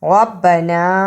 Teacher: نا کو اس لیے لمبا کیا کہ اس پہ چھوٹی مد پڑی ہے، جسے 2 الف کے برابر لمبا کرنا ہے۔ 2 الف سے مراد یعنی 2 بند انگلیاں باری باری کھلیں۔